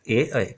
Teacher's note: ए ऐ कशात येतात तर ते कंठ तालव्यामध्ये येतात ए ऐ कंठ आणि तालु या दोघांना आपला जिभेचा टच होतो